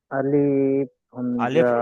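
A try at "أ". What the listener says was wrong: আলিফ টান হবে না, আলিফ আলিফ আলিফ কোনো সময় টান হবে না।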